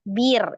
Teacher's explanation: ada ro sukun, sebelumnya ada huruf yang berharokat kasroh, maka hukum ro-nya dibaca tarqiq, tipis ya